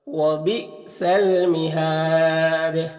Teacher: یہاں پر وقف کریں گے تو دال میں قلقلہ ہوگا اور مد عارض وقفی ہوگا